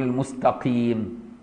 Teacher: يقول المستقيم مش المستكين، المستقيم تبقى قاف رقيقة مش كاف